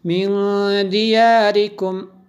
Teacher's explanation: آگے نون ساکن ہے، نون ساکن کے بعد دال حروف اخفا میں سے ہے، اس لیے یہاں پہ بھی غنہ ہوا